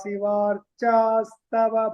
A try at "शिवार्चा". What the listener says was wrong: Just that Shiva should be chanted as she, not sa. That sa should not be heard. It is Shivaha. That she pronunciation should be very clear.